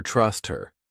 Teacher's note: we can get rid of that H sound, and it just sounds like her trust her.